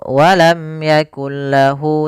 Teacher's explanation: tidak ditahan tapi masuk ke huruf lam karena dia idgham · Yaitu idgham artinya kita memasukkan, sehingga di sini bukan yakun lahu tapi langsung yakul lahu, langsung dimasukkan ke huruf lam setelahnya. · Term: idgham bila ghunah, idgham bila gunnah